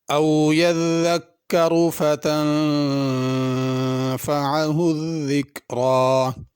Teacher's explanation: यज़्ज़क्करु और ज़िक्रा दोनों में ज़ाल है, इसको ज़ा न पढ़ा जाए। तनफ़अ में आइन है और तन के नून पे गुन्ना भी होगा।